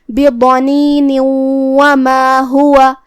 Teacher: آخری میں جو کہ نون کے نیچے تنوین زیر ہے، تو ہم یہ آیت کو اگلی آیت کے ساتھ پڑھے تو تنوین کو واو میں ملاتے ہوئے غنہ اور تشدید کے ساتھ یہ حکم کو ادا کریں گے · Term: ادغام بغنہ